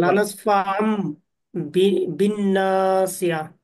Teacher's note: সাকিনের পরে বা আসছে ইকলাবের হরফ, পরিবর্তন করে মিম দ্বারা পরিবর্তন করে পড়বে।